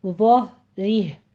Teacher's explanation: ज़ा को पुर पढ़ना है, हा को अक्से हलक से अदा करना है